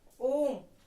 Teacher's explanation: ओम बोलने में हमें तिगुना समय लगता है, तो वो हमारा प्लुत स्वर कहलाता है